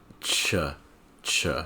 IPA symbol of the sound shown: tʃ